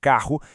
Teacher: Contudo, no dígrafo da palavra carro, visualizamos duas letras R, mas os nossos ouvidos processam apenas um único e contínuo som consonantal. São duas letras operando com uma só voz.